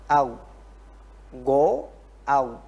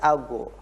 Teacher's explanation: pangkal daripada lidah ini mundur, ya, sehingga menghasilkan huruf yang tebal, au. Jangan dikembalikan lidahnya, karena kalau dikembalikan akan melahirkan ago, akan melahirkan pantulan tadi. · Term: ghin